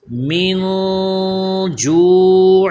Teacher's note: ایک الف کے برابر غنہ کیا جا رہا ہے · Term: اخفا